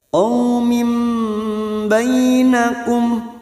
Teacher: Kasr tanwin bertemu ba, namanya bacaan iqlab. Nun sukun atau tanwin yang bertemu dengan huruf ba, namanya bacaan iqlab. Artinya membalik atau menukar. Kita dengungkan selama 2 atau 3 harokat. Qaumim ba, dan siap membunyikan huruf ba.